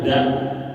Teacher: da itu adanya ujung lidah diletakkan ke belakang gigi seri yang atas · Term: huruf da